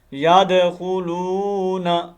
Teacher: واو مدہ کو ایک الف کے اندر لمبا کرنا ہے